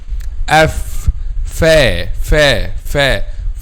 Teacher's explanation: When we pronounce letter fa, the back of the tongue is not raised. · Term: light letter